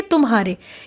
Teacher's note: तुम्हारे के उच्चारण में म के पश्चात ह पर शीघ्र संक्रमण हो गया यानी कि शीघ्र हम म के बाद ह पे आ गए